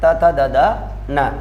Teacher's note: त वर्ग का उच्चारण स्थान दंत होते हैं